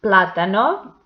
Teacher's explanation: the antepenultimate syllable is the stressed one